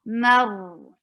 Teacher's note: Give the wasut, medium flow of sound on ra, mar, and it's heavy.